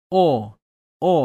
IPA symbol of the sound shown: o